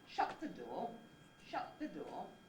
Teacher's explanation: Shut the is the head, door is your low-rise nucleus.